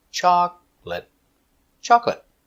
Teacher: chocolate remember two syllables chocolate not chocolate not three two chocolate stress is on the first syllable